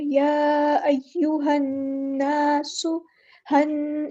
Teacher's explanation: नून पे गुन्ना ज़मानी होगा, तो यहाँ पे हम रुकेंगे एक अलिफ के बराबर